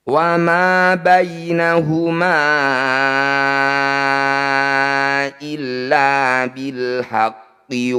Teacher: bertemu dengan Hamzah di lain kata disebut bacaan Mad Jaiz munfasil Ma yang bertanda layar panjangkan lima harakat atau lima ketukan